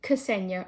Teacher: we would tend to add a vowel between the K and the S sound